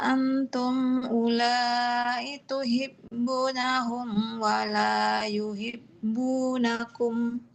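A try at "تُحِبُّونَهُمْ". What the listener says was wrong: Boleh diulang. Tuhibbu, tuhibbu huruf H-nya ya. ba-nya tadi terlalu cepat Ibu. Belum sempurna dua harfatnya. Coba Ibu H-nya hahihu.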